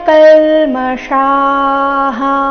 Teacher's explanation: ವಿಸರ್ಗದ ಉಚ್ಚಾರಣೆ ಹ ಎಂದು ಬರಬೇಕು